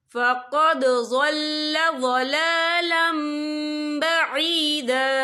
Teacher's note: और आगे देखें ضل ضلالम, लाम के पर तनवीन है, तनवीन के बाद जो है बा आ रहा है तो यहाँ पर इकलाब होगा यानी तब्दीली होगी। तो हम यहाँ मीम का तलफ़ुज़ करेंगे और हम यहाँ गुन्ना भी करेंगे।